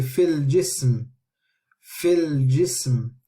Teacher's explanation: with the Fa, the Kasra will be joining onto the lam and we are going to miss the Hamza